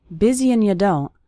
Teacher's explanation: that's very common for the word and to get reduced to just an n Sound